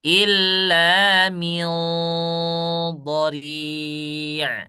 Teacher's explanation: harus dibaca ikhfa dengan tafkhim